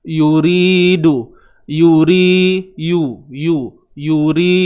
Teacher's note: huruf ra baris bawah nipis kan, dan jangan lupa panjangkan dia 2 harakat kadarnya sebab dia yamat kan, maksli 2 harakat ni, yuri.